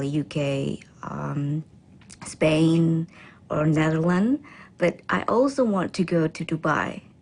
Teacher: She then lists the countries with her voice pitch rising until she ends with a level voice for Dubai.